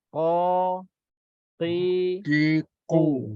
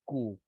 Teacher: Qu kena dalam sikit. Kalau tidak dia akan jadi huruf kaf.